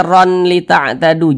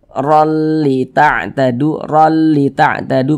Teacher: Maka cara membacanya itu dengan cara memasukkan kemudian tidak digunnahkan, tidak didengungkan. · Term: idgham bila gunnah